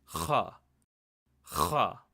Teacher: To properly pronounce this sound, it's almost like a guttural sound, but it's almost like you're scratching your throat, and it should generate a lot of spit when you say the letter. So it's Kha.